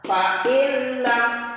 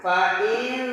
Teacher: suara n nya atau tanwinnya hilang failam Jangan terlu lama jangan fail salah harus failam seperti itu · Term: Idham bilahuna